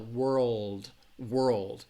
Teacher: The RL is a tricky combination because, again, your tongue, when you're saying the R sound, your tongue is in the middle of your mouth, and then you're going to transition a little upward for that L, world.